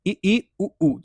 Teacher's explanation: उच्चारण में आप पाएंगे कि इसमें मुख जो है सबसे कम खुल रहा है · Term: संवृत स्वर